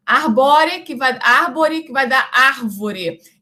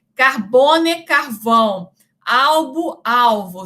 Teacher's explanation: as duas consoantes, o B e o V, são consoantes sonoras. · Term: degeneração